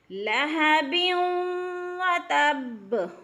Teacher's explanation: تبت یدا ابی لہب وتب، بیوں پہ وہ مشدد، یعنی 2 زیر تنوین کے بعد وہ مشدد آ رہی ہے تو ادغام ہو رہا ہے، یعنی یہ با کو وہ کے ساتھ مدغم کر کے ملا کر پڑھیں گے اور سختی سے پڑھیں گے